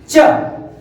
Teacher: च को चेक करिए, जीभ आपका जा रहा है तालु पे